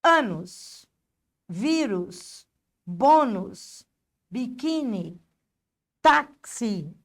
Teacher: Terminando em I e em U, sendo que a sílaba tônica é a penúltima.